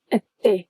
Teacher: The word até needs to have an open E at the end, yes, but it's sharp and it's short. We don't really have long and short vowels, but open or closed instead.